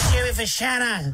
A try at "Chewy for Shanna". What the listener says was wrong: Yeah, yours is too high. No, Brownie's right. That sounds like Mr. Burns doing an impersonation of Shannon Knoll.